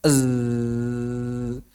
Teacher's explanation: Nah, di sini ketika mengucapkan huruf sin misalnya, maka makhrajnya sama tapi pitaas suaranya yang berbeda. Tentu saja ketika kita mengucapkan huruf zai, pita suara bergetar.